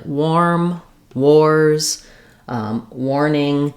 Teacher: When we have words with WAR, we actually use the OR sound in these words. So words like warm, wars, warning, letters AR say OR.